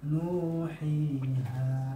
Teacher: Nu dipanjangkan waw, hi dipanjangkan ya, ha dibaca panjang alif. Dan hitungannya yang hakikatnya ya satu huruf itu satu ketukan.